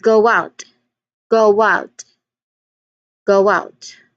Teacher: there's a oo sound there like the W. So you um that particular W sound is used as a linking to another to the second word. · there's a w sound there, like the W.